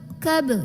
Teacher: Biasanya kalau ada ba sukun maka kita baca dengan pantulan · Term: Qalqalah